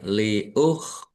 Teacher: Ro fathah berdiri mad thobi'i panjang dua harakat.